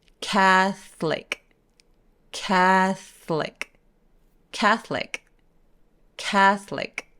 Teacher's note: TH 바람 소리, 번데기 소리 바로 뒤에 L이 따라온다고 보시면 돼요 · 이 카톨릭은 모음이 보이기엔 세 개지만 사실 중간에 있는 O를 없애버려요. 그래서 catholic.